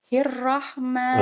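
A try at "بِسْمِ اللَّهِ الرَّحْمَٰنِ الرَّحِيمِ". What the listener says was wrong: Enggak, jangan buru-buru. Hirrahmani. Bismillahirrahmani. Jadi baca ro-nya itu tenang, sabar, jangan buru-buru kayak orang lompat. Ibu bacanya tuh kayak gini tadi. Bismillahirrahmani. Begitu kayak orang lompat. Belum selesai udah lompat. Ro-nya.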